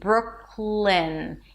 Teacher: And then from the k sound that is in the back of your throat, you move to the L immediately, bruk-lɪn. You don't release the K.